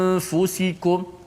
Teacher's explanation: Gunnah hanya pada nun. Bila kita sebut huruf fa, gunnah dah tidak ada lagi. · Selepas kita sebut hamzah a, okey, mulut kita, lidah kita jangan pergi makhraj nun. Yang pergi nun biar kerja hidung saja. Dengung dekat hidung. Daripada a, mulut kita, lidah kita terus berpindah pergi kepada huruf fa. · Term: ikhfa